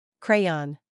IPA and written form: ˈkreɪ.ɒn (Crayon)